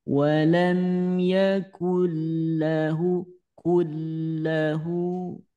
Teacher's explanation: Dileburkan tanpa pakai dengung ya. Jadi jangan sampai didengungkan. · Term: idgham bila gunnah